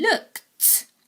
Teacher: in looked, it sounds like there is a t on the end